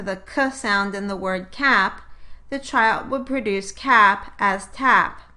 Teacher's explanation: typically from a velar or palatal place of articulation to an alveolar place of articulation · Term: fronting